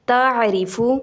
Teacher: اگر را کے نیچے زیر ہے، واضح ری ہے، تو اس کو پر نہیں کیا جائے گا بلکہ باریک پڑھا جائے گا